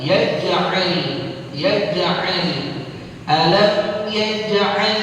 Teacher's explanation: ada qalqalah sughra karena dia ada di tengah kalimat